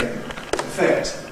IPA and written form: əˈfekt (affect)